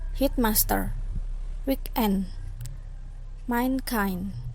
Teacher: Compound that receive primary stress on the second part, not the first.